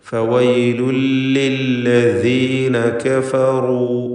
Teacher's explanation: ഫവൈലുൻ എന്നതിലെ തൻവീൻ ഇദ്ഗാം ബിഗൈരി ഗുന്ന നൽകി അവ്യക്തമാക്കി, അതായത് ശേഷമുള്ള ലാമിലേക്ക് പൂർണ്ണമായും ലയിപ്പിച്ച് മണിക്കാതെ ഉച്ചരിക്കുക. ശേഷമുള്ള ലാമിലേക്ക് തൻവീനിനെ പൂർണ്ണമായും ലയിപ്പിക്കുക, മണിക്കാതെ ഉച്ചരിക്കുക.